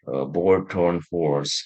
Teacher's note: Jadi O-nya si lidahnya itu kayak yang ke belakang karena memang posisinya di belakang. Board, torn, horse gitu. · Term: O setengah